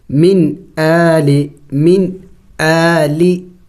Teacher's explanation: حمزہ ہے، حروف حلقی میں سے ہے تو اخفا نہیں ہوگا اگرچہ نون ساکن ہے